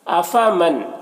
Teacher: افمن، یہاں پر نون ساکن کے بعد حمزہ ہے حروف حلقی میں سے، تو نون میں اظہار حقیقی ہوگا، اسے جلد پڑھنا ہے، نون کو ظاہر کر کے جلد پڑھنا ہے.